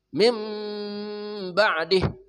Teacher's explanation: iqlab artinya membalik atau menukar suara nun menjadi mim